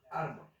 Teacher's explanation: Puse el ejemplo árbol y ar, donde recae la intensidad o la fuerza, y bol, lo que no lleva intensidad. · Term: acento